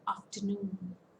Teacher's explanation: among these three syllables the third syllable is getting stressed